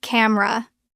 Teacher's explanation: We drop the e. It becomes two syllables.